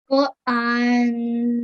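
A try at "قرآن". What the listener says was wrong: Okay, just say these first 2 letters for me. Qur. Qur. You really need to try and pronounce the ra there. Qur'an. Okay, so you need to say the ra really carefully. Qur'an. Just keep practicing that and make sure you pronounce every single letter really, really clearly.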